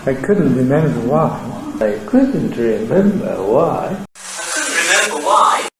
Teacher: I put a Low Rise on the end, because that's by far the most probable Nucleus to go with a Low Head.